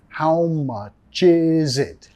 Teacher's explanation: Nota la S en is, vamos a pronunciar como sonido Z.